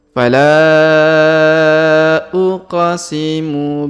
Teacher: Huruf qaf berharokat sukun maka kita pantulkan